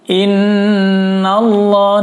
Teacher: nun tasydid, hukumnya adalah gunnah nun, dibaca tahan 4 ketukan dan didengung